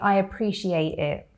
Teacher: whereas in British English we say I appreciate it. And if I'm not pronouncing the T with a true T but instead with a glottal T